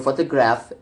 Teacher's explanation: The base word photograph is stressed to the first syllable